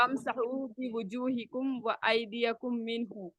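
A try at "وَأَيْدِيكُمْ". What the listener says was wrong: ایدیکم ہے، ایدیا نہیں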